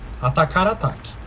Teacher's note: Ocorreu um recuo da sílaba tônica. A sílaba tônica recuou uma sílaba. Então, ela estava aqui, ela recuou ela voltou uma casa.